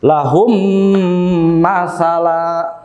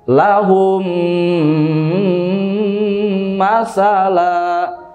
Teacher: Karena mim sukun bertemu dengan huruf mim. Maka di sini diidghamkan ya, atau dimasukkan mim yang satu yang sukunnya ini ke mim yang kedua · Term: idgham mimi